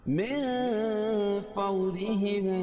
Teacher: را کے نیچے زیر ہے تو را کو باریک پڑھیں گے